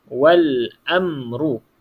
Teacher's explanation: yang ni contohnya Wal Amru Wal bermaksud lam tu dibunyikanlah Wal walaupun lam tu mati kita bunyikan dia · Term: alif lam qamariah